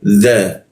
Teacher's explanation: huruf za lidahnya digigit dia